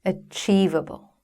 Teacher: which syllable in 'achievable' is stressed? It is the second syllable